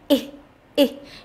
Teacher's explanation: cảm giác có luồng khí thoát ra đập hẳn vào tay. Chúng ta hãy khi mà chúng ta phát âm cái âm y này thì chúng ta để tay ở trước mặt, để tay ở trước mặt như thế này và chúng ta phát âm ra y y. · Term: âm y ngắn